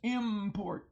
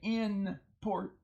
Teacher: the N has assimilated to the p and so now it becomes an M